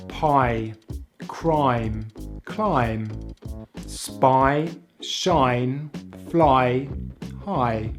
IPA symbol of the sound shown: aɪ